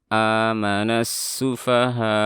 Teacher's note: saat kita waqaf pada mat wajib seperti ini, kita harus menaikkan di ujung suara · Saat hamzah sukun, kita harus menutup 2 pita suara yang menyebabkan suaranya terputus tiba-tiba dan seolah-olah ada terhentak. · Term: mat wajib muttasil